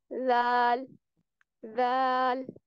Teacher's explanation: जुबान की नोक को सामने वाले ऊपर के 2 दांतों के अंदरूनी किनारों से लगाकर नरमी से पढ़ेंगे। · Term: हरूफ लिसाविया